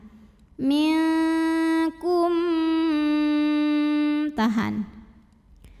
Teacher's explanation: khusus untuk mim ketemu sama mim ya maka cara bacanya itu mim pertama masuk ke mim kedua disertai bunyi dengung bunyi M tahan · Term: idgham mimi